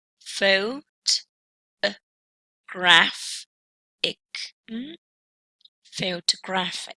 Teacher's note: With a secondary stress, yes, the stress mark that we see here shows that this word is double stressed, with the secondary stress going on the first syllable, and the primary stress on the third